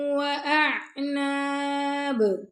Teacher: با پہ ہم رک رہے ہیں تو با پہ کلکلا کر رہے ہیں